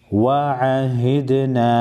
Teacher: دال ساکن پر قلقلہ کریں گے